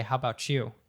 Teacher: that t y becoming a CH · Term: connected speech